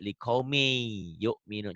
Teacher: Melebur. Bunyi N-nya, bunyi tanwinnya berubah menjadi Y. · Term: idgham biguna